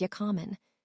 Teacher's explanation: Becomes ya common. The R disappears entirely.